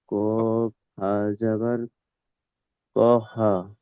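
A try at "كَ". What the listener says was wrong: ক, হা বলবো না, আবার কফ হা জাবার কহ।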